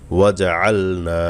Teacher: আইন গলা নিতে হবে, নুনে এক আলিফ টান দিতে হবে, জবরের পরে খালি আলিফ মদের হরফ।